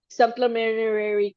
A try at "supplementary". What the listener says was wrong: That's a few more R's in there, but yeah, you got it.